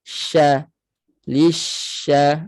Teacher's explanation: Shin ada sifat tafasi sifat kuat berhemburan bunyi tanpa memuncungkan bibir jangan mucung bibir habit juga Shin ramai yang l tak tahu · kena Mena dengan Bibir makhraj dia makhraj syin tengah lidah eh tengah lidah sentuh pada langit Sya Lisya ha okey tidak perlu menuncung bunyi nipis kemudian dia